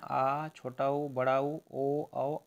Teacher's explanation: पश्च स्वर है जीभ के पिछले भाग से जो बोले जाते हैं